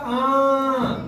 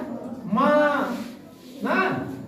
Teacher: देखो मुंह से निकल रहा है, लेकिन हम नासिका का भी प्रयोग कर रहे हैं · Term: अनुनासिक